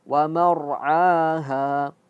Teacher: Akhroja minha maaha waara'aha. Waar'aha tebal ya ketika ro sukun menjadi tebal.